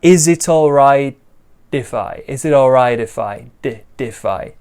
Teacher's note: all rightify now for me i'm a british english speaker so i often say like t sounds a little bit stronger than americans but you can make this a d sound too